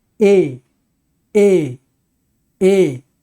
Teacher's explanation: अग्रस्वर माने जिसको बोलने में जबान आगे खींच रही